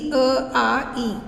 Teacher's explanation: इसके उच्चारण में कंठ, तालु का उपयोग होता है, जीभ, ओठ का नहीं। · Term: स्वर